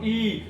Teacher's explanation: आपकी जीभ ऊपर वाले जबड़े की ओर खिंचाव है, तो इसे बोलते हैं संवृत स्वर